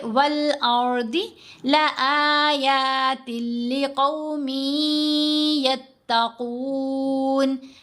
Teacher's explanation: تا کو لام سے ملایا، تا کے نیچے دو زیر ہیں، آگے لام مشدد ہے، تو یہ یرملون کا ادغام ہے، لیکن ساتھ ہم نے غنہ نہیں کرنا۔